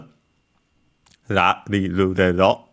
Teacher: it's a flap in the position you quickly move and take back the tongue from the position of the, ra.